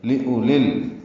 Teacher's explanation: وذکریٰ لأولی الالباب، لی لام زیر لی جلدی سے معروف طریقے سے ادا کرنا ہے. حمزہ کو جلدی پڑھنا ہے، واو نہیں پڑھنی ہے، لکھنے میں آئے گی پڑھنے میں نہیں آئے گی